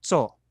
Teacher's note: an ordinary ts made with lung air